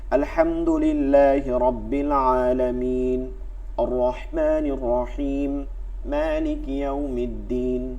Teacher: এখানে প্রতিটা শেষে 3 আলিফ ছিল, কিন্তু 1 আলিফ করে করে যাচ্ছে। এইটা সংক্ষিপ্ত করা যায়। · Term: কসর মাদ